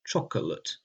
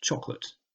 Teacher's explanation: the word chocolate is spelt like it has three syllables, cho-co-late, but is normally pronounced choc-late